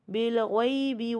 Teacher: یا ساکن سے پہلے زبر ہے تو یا لین ہے یہاں